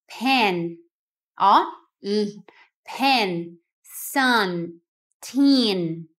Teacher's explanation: a boca fica aberta e a ponta da língua toca no começo do céu da boca